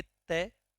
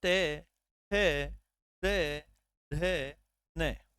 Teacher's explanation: जब आप तय, थे, दे, धे, न का उच्चारण करेंगे तो आप पाएंगे आपकी जो जीवा है, आपकी जो जीवा है वो स्पर्श करती है कहाँ, दांतों के पास